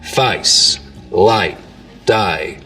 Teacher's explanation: the diphthong in face starts real low, down around face, light, day. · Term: face lowering